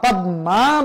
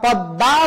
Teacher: যেমন পদ্মা, পদ্মা বলা যাবে না, পদ্মা বলতে হবে, কারণ ম ফলা যার সাথে যুক্ত হবে সেটা দ্বিত্ব উচ্চারণ হবে। আর ম ফলা যেহেতু নাসিক বর্ণ সেজন্য চন্দ্রবিন্দু হবে।